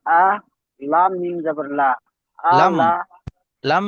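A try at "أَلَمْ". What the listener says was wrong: আ টান হবে না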